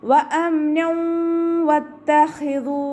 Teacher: തെൻവീനിന് ശേഷം ഇദാം ബിഗുന്നയുടെ അക്ഷരമായിട്ടുള്ള വാവാണ് വന്നിട്ടുള്ളത്. തെൻവീനിലുള്ള നൂനിൻ്റെ സൗണ്ടിനെ വാവിലേക്ക് ലയിപ്പിച്ച് ഉന്നയോട് കൂടി ഒതി കൊടുക്കുക കേട്ടോ.